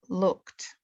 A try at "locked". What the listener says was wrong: You said looked. I want locked. Say it 3 times.